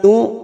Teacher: hamzah sukun membaca harus tegas, ya, tidak boleh seperti ain